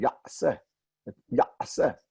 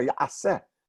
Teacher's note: There's a little bit. I can't say ya with an ayin and then go into se without letting out a little bit of air